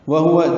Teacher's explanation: وہوا جلدی پڑھنا ہے، حق سے حلق سے ادا کرنا ہے، اور دونوں واو ہونٹوں کی نا تمام گلائی سے ادا کرنا ہے